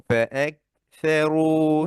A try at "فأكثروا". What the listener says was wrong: কাফটাকে আরো শক্ত করবেন, তাহলে হামটা সুন্দর হবে। فأكثروا،